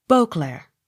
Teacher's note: accent on first syllable